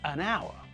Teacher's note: We don't pronounce the H at the beginning of the word.